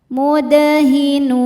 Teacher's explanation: Dal sukun hukumnya qalqalah sughra karena ada huruf qalqalah di tengah-tengah kalimat dan ini sukunnya asli ya, maka dipantulkan dengan pantulan yang kecil. Mudahinun. Saat berhenti nun hukumnya mad arid li sukun.